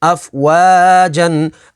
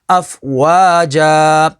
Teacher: آگے وقف، اف وا جا. وقف تام کی وجہ سے 2 زبر کو الف میں بدل دیں گے